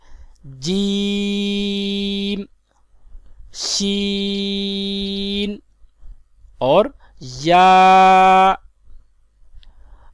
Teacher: ان 3 حروف کا مخرج زبان کے درمیان اور تالو کے درمیان سے ادا ہوتے ہیں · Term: حروف شجریہ